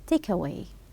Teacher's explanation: Then you have to link it to link between the particle and the verb. Link them together.